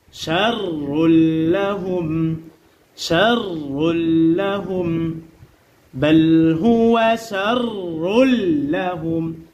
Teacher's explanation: রয়ের উপরে যখন জবর অথবা পেশ আসে তখন রকে কি করে পড়তে হয়? পুর করে পড়তে হয়, অর্থাৎ মোটা করে পড়তে হয়